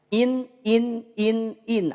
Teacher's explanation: disamarkan adalah bunyi tanwinnya atau bunyi Nun sukunnya tidak dibaca robuatin kalau kita baca robuwatin dibaca in ada terdengar Nun nya jelas terdengar